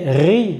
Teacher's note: Attention à ce que le son vient bien du milieu de la gorge et pas du haut de la gorge pour bien distinguer le son de la lettre Kha.